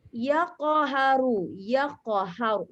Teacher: Ustazah membaca seolah-olah qaf itu ada baris atasnya. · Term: qalqalah sughra